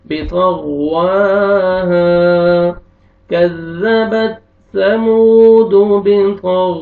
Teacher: ہا کو الف سے پہلے زبر ہے، ہا کو آپ نے کھینچنا ہے